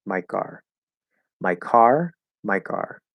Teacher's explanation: it's going to be a softer K, not as aspirated.